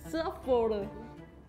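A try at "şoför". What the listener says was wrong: 너 S 밑에 뭔가 있잖아.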